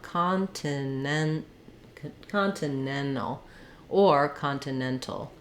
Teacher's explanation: because of the NT and L combination, I'm going to usually aspirate this first T, so I won't leave it out